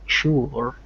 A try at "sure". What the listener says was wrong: It's mostly the O before it is a little tight. Like you're almost too. You get to the R a little too fast. So what you're doing sounds to me like sure, but it's sure.